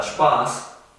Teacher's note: En cambio la palabra Spaß, la A es un poco más larga.